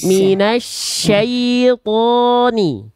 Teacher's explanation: bukan minasa, itu sin, harusnya shin